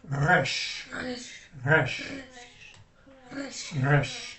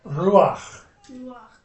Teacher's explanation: if you're making a Hebrew R, it's a little bit like a French R. And the French R is at the back of the mouth.